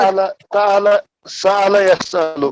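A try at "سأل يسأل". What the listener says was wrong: सअला यसअल, बोलिए यहाँ हमजा है ना?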